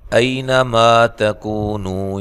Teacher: ای لین ہے، نون کو لمبا نہیں کرنا